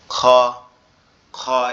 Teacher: Opposite, অর্থাৎ আমাদের এই যে কণ্ঠনালীর শুরুর থেকে না হয়ে শুরুর অপোজিট, অর্থাৎ কণ্ঠনালীর শেষ অংশ থেকে উচ্চারণ হবে।